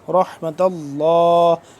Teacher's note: لفظ اللہ پور پڑھا جائے گا کیونکہ اس سے پہلے زبر ہے